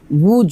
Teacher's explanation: ওয়াও পেশ উ দুই ঠোঁট গোল করে ওয়াও পেশ টা উচ্চারণ করতে হবে